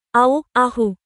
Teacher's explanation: কণ্ঠনালীর মধ্যভাগ থেকে উচ্চারিত হয় দুটি হরফ। এই দুটি হল হা ও আইন, যেমন আউ, আহু।